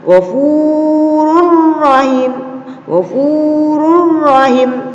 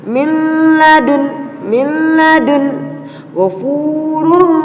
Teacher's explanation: Di mana apabila ada nun sukun atau tanwin bertemu dengan salah satu huruf hijaiyah yang berjumlah 2, yaitu lam dan ro, maka kita membacanya tidak didengungkan, artinya masuk tapi tanpa mendengung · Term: idgham bilaguna